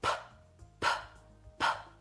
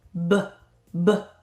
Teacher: 우리는이 두 개의 글자를 짝꿍 글자라고 할 거예요. 똑같은 입 모양인데 하나는 손끝에 진동이 없고 하나는 손끝에 진동이 있는 걸 말해요 · 퍼 퍼 브 브 어때요? 프라고 터트리는 소리를 했을 땐 손 끝에 진동이 없죠. 알파벳 B의 소리를 낼 때는 손 끝에 진동이 느껴지죠.